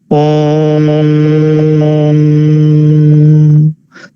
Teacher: ओ और म, इसके बीच में आप बहुत अधिक गैप देते हैं, बहुत अधिक समय लेते हैं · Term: प्लुत स्वर